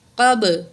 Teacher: من، قاف زبر با، قب، قاف کو موٹا پڑھیں گے، با ساکن ہے، حروف قلقلہ میں سے ہے، یہاں قلقلہ کریں گے.